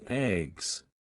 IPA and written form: ɛɡz (eggs)